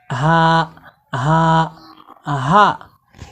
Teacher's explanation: আপনারা মুখের সামনে হাত দিয়ে প্র্যাকটিস করুন যে যখন গোলহাক কন্ঠনালীর শুরু থেকে শক্ত করে পড়বো এই গোলহা উচ্চারণে মুখ থেকে কোন রকমের বাতাস বের হবে না।